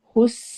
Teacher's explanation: سین میں سٹی کی آواز آئے گی